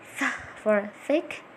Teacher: Interdentals, formed by putting the tongue between the teeth.